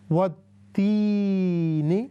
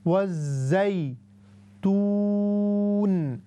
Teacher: there is a یا ساکن and it has a کسرہ before it. This is why we have to stretch it for 3 seconds. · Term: یا مدہ